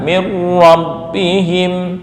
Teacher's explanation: nun mati bertemu ro idgham bila gunah